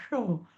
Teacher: पोटफोड्या श म्हणताना जीभ वरती लागते